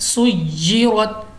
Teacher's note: तशदीद की वजह से हमने इसको दबाव के साथ पढ़ा है यानी 2 मरतबा पढ़ा है